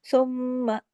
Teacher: इसमें मां की आवाज को मीम अलिफ मा नहीं बना देना